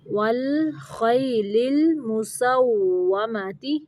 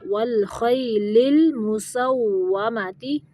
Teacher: واو کی ادائیگی کے وقت ہونٹوں کا استعمال کرنا ہے، یعنی ہونٹوں کو گول کرنا ہے، دانتوں کا استعمال نہیں کرنا